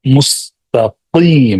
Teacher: قاف حلق سے، حلق کے اندر سے اس کو نکالنا ہے